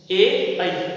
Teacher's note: कंठ और तालु जो दंत के ऊपर वाला हिस्सा जहाँ जिभ टच होती है उससे जो उच्चारण होते हैं वो होते हैं ए और ऐ। ए ऐ जिसको हम कहते हैं कंठ तालुः।